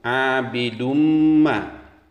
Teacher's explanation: Dumma itu adalah idgham bil gunnah atau idgham berdengung. Setelah tanwin dhammah terdapat huruf mim, maka wajib dibaca dengung.